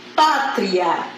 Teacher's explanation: pátria eu tenho uma semivogal tá e vou para a vogal então eu vou chamar de som ou de ditongo tá no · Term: crescente